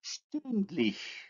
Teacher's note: The vowel u is plus back plus round. When we add the suffix which contains the front vowel, the stem vowel becomes also front. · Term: umlaut